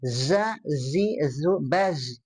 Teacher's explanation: huruf zai. Itu zai itu dia punya sifat sofir ya.